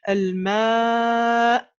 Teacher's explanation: On avait dit la hamza sakina, c'est en fermant les cordes vocales qu'on va le faire.